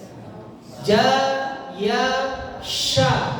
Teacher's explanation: Makhrajnya shin ada di tengah lidah, mengenai langit.